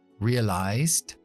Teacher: se pronuncia con la S con voz, que es Z · Terminando con la D, que la vamos a desonorizar porque vienen consonante después.